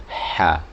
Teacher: Jadi hembusan dulu baru suara ha. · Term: huruf ha